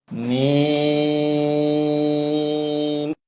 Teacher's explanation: এই হরফটি বলতে উভয় ঠোঁট মিলিয়া শুরু হবে উভয় ঠোঁট মিলিয়া শেষ হবে চার আলিফ পরিমাণ লম্বা হবে ওই সময়টা মুখ খুলে থাকবে মিম